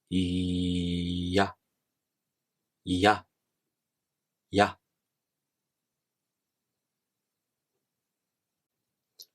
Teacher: you first make the tongue position of the E vowel, and then the tongue quickly moves to make the following vowel sound. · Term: semivowels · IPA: [ja]